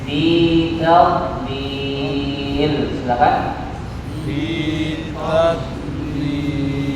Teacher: Cara membaca dhad ketika sukun adalah ditahan dengan kuat.